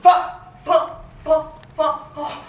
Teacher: en appuyant les dents d'en haut sur la lèvre de dessous